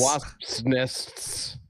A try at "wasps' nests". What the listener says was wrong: To say properly, you really have to drag it out. Otherwise you're just saying wasp nests. But even that, wasp nest, it's hard. It's a hard word to say. You gotta enunciate. The tip of the tongue, motherfucker.